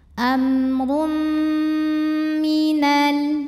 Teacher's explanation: Karena ada tanwin dhammah menghadapi huruf mim, maka cara bacanya tanwinnya masuk ke mim, amrum, disertai bunyi dengung, tahan. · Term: idgham bi gunnah